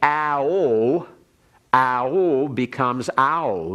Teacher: ao becomes ow very easily and readily in combining those two vowels. And so you take off the holum and leave this. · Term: diphthong